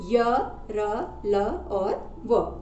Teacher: इन व्यंजनों का जो अंतस्थ व्यंजन है के उच्चारण में श्वास का अवरोध बहुत कम होता है